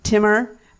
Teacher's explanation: the emphasis has to be on the second syllable for it to be right